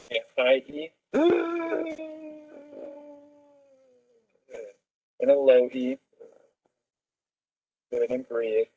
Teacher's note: the patient's voice is very breathy and hoarse and there's a lot of air escape and floppiness of the vocal cord